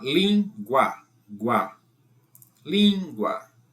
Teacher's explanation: Então U é semivogal. U é semivogal e o A é vogal. Então, semivogal mais vogal de tom crescente. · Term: ditongo crescente